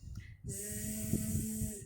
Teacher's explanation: Suaranya mengalir karena zai ini mempunyai sifat rokhwah yang artinya mengalir suara. Zzz. Nah, mengalir suaranya.